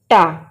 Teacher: टा जब हम बोल रहे हैं तो हमारी जो जीभ है वो मुड़ रही है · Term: मूर्धा